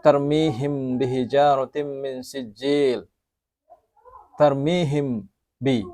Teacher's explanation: membunyikan atau menyamarkan sapawi berarti bibir disebut dengan Ikhfa Syafawi sebab makhroj dari huruf hijaiyah mim dan huruf hijaiyah ba adalah pertemuan antara bibir bawah dan bibir atas jadi agak samar pembacaannya